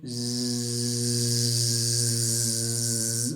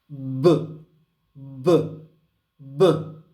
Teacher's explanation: vocal cords are together, the air stream forces its way through washes its way through and causes them to vibrate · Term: vibration